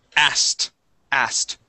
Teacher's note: we do not pronounce that K anymore, okay. It sounds more like this, asked, asked.